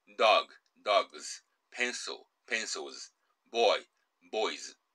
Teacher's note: 有声音や母音に合わせて、Z▁という発音に変わります。